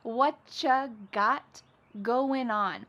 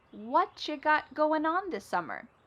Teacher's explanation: Whatcha is what plus u. U becomes cha.